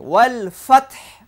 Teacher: হায়ের মধ্যে বাতাস চালু থাকবে।